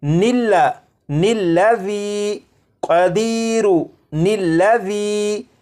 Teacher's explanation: ان دونوں الفاظ کو آپس میں ملانے کے لیے ان کے درمیان ایک نون کا اضافہ کریں گے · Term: نون قطنی